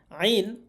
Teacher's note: আইন হরফ গলা চেপে উচ্চারণ করতে হয়।